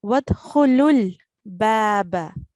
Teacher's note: So it would be pronounced as wadkhulul baba. So the lam, which carries a dhamma, and the lam with sukoon, we are going to join it together.